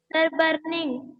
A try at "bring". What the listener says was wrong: बर्निंग। देखो ING, देखो पहले इसको देखो, बी आर से ब्रा, ING से इंग, क्या हो जाएगा? जब दोनों को आप ब्लेंड करेंगे तो क्या होगा? BRI से BNG, ब्रिंग। ये ब्रिंग है, बर्निंग नहीं है बेटा।